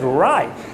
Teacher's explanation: The T is almost non-existent, right? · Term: stop T